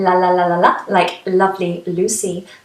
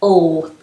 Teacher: difference is the positioning of the back of the tongue so a light L is at the front in lalalalala like lovely Lucy but a dark L is at the back